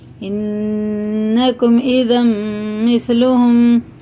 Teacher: یہ شد کے پہلے دو زبر آ رہے ہیں، میم پہ شد ہے تو یہ غنہ کر کے پڑھنا ہے